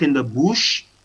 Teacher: the upsilon or the uh sound that we have here which is required here as in words like good or in words like bush